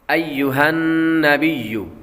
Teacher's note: نون مشدد پر ہمیشہ غنہ ہوتا ہے تو یہاں پر غنہ کریں گے، اور اس سے پیچھے جو ہا ہے وہ ہا موٹی والی پڑھیں گے، ہا حلقی نہیں بلکہ ہا موٹی پڑھیں گے۔